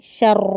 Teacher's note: شر میں را کو پر کرتے ہوئے سختی کے ساتھ پڑھنا ہے